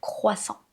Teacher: Ne prononcez pas le t à la fin de ce mot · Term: muet